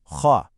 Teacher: Then you have the mufahama, or heavy letters. For these, the back of your tongue rises up, and it makes your whole mouth feel fuller